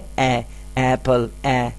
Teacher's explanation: So initial sound اے جو ہے وہ ڈائریکٹلی حلق سے آ رہا ہے. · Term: واؤل ساؤنڈ